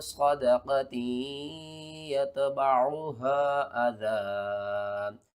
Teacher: نون ساکن یا تنوین کے بعد ادغام میں سے کوئی بھی حرف آ جائے تو وہاں پر ہم ادغام مع الغنہ کرتے ہیں، یعنی کہ تا کو یا کے ساتھ ملائیں گے بھی اور ساتھ میں غنہ بھی کریں گے